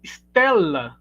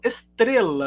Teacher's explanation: Houve a inserção de uma vogal na frente